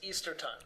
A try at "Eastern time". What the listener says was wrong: Eastern time, and... No. Eastern. Eastern, with an N at the end.